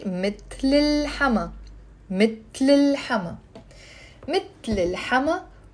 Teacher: Mittel, il hama, the mother-in-law. Now with the liaison, I'm not gonna say mittel, il hama, I will say mittel hama